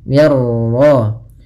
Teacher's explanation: minnya tipis, ra-nya tebal